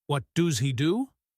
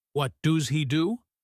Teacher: Sounds like what does he do? The s on does connects to he.